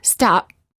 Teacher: the lips stay closed. No air comes out. This creates almost a silent version of the sound P or a half P. We know the P is there, but we don't hear all of it.